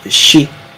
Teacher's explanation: So you're actually dropping down. You're not going up. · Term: lower intonation